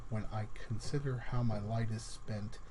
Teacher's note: You notice that there's an unstressed, then stressed syllable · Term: iambic pentameter